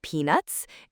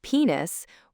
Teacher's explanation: The common mistake is when that T just kind of disappears.